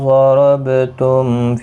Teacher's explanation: ضاد حروف مستعلیہ ہے، را بھی پر پڑا جائے گا، ضاد بھی، با ساکن پر قلقلہ ہوگا، میم کے بعد فا آیا ہے، میم ساکن کے بعد تو یہاں پر اظہار شفوی ہوگا، غنہ نہیں ہوگا۔